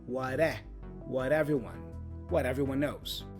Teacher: The T for what again becomes a flap T sound, rara, which is joined with the vowel e for everyone.